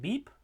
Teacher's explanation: But we'll talk about them as stops because they stop the air. So the sounds in English that are stops are b and p in a word like beep. Those are the bilabial stops.